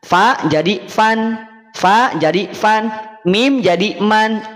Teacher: Berarti ada kadar tanwinnya, ada kadar fathahnya. Ada bunyi nun sukunnya, ada bunyi vokal A-nya. Sehingga akan terdengar an. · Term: tanwin fathah